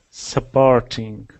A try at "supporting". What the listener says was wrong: Just perfect that R sound. So instead of it saying supporting, your tongue is going like this. It's rolling under and it wants to touch the top of your mouth every time you make that sound. So just keep it more like this.